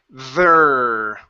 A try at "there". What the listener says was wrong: Oh, watch the R. You don't want to say there and start rolling it. You don't want to roll.